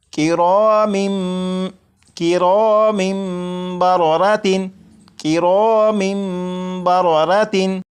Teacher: जब तनवीन के बाद बा है तो यहाँ पर इकलाब होगा, यानी यहाँ पर तनवीन के अंदर जो नून साकिन की आवाज़ होती है उसे मीम से बदलकर गुन्ना करके पढ़ेंगे और ये पढ़ा जाएगा किरामिम किरामिम बररातिन किरामिम बररातिन।